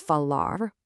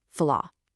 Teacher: the R at the very end of these verbs actually sounds like the English H in a lot of Brazilian accents. You take that hard rolling R and you just let it breathe into this soft breathy H.